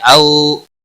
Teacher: واولین ہے تھوڑا نرمی کے ساتھ کھینچ کر ادا کریں گے